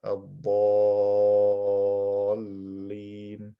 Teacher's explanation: So I stretch the alif for 6 harakat, ad-dallin.